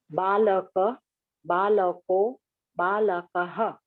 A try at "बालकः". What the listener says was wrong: Balaka, Balakau. Balaka. Visarga must be pronounced. Balakaha, not Balakaha. You are dropping. Why do you drop?